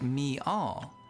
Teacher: in transitions like me all, a subtle extra Y sound known as a glide is added by some speakers to transition between vowels